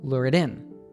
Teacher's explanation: Then, the T sound from it is another tap T, and the stress falls on the words lure and in.